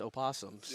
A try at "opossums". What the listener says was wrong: You don't pronounce the O. It's just possums.